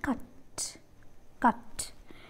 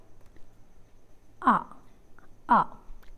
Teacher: during the articulation of this vowel the center of the tongue is raised to a position between open and half open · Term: central vowel